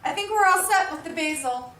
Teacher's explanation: Did you hear reduction of we're to were?